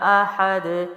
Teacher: احد جو ہے وہ پڑی حرکات کے ساتھ ہے، دال کلکلا کرے گا